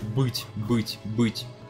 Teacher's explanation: Да, то есть, например, мы когда говорим по-русски глагол «быть», мой любимый пример, «быть», «быть», «быть», вроде бы там «ы», а потом «те». Но на самом деле мы «ы» не произносим как «ы», мы ее произносим как дифтонг «ы», «ы», «ы», потому что дальше полутализованное стоит «те».